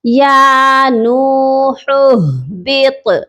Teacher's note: طا حروف قلقلہ ہے اور ہیوی لیٹر بھی ہے، اس کو ہم نے پر بھی پڑھنا ہے اور اس پہ قلقلہ بھی کرنا ہے